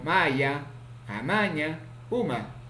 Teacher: Consonante ma, nasal, bilabial, sonoro, ocurre en posición inicial, medial y final.